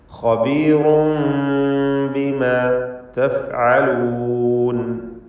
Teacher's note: റാഇന് തഫ്ഖീമാണ്. റാഇന്റെ തൻവീൻ ഇഖ്ലാബ് ചെയ്ത് മീമാക്കി മാറ്റി മണിക്കണം.